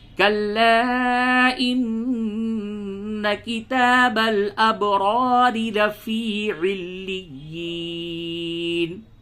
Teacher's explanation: تو پہلی راہ کو پڑ پڑھیں اور دوسری کو باریک